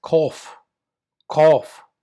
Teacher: it's a K sound at like at the back of the throat like the calling of a crow